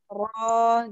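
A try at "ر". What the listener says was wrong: Jadi dia harus keluar. Suaranya harus keluar, jangan di dalam.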